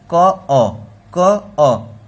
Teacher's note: क के साथ अ का भी उच्चारण आ रहा है